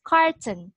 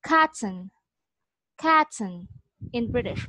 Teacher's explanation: In some areas, they pronounce this one as carton, carton with a r sound. But in British, they don't really pronounce the r sound